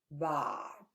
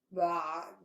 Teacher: Okay, again, think about pulling the back of your tongue backwards. So you say the ba, and then right away, actually, when you start saying this fatha, you start pulling the back of your tongue backwards. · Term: ayn